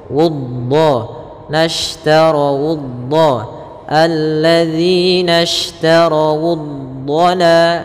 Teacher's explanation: dhad ada salah satu sifatnya adalah sifat istiqalah, yaitu sifat memanjang sedikit